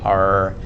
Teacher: the english r where we say r in the middle of the mouth similar to a w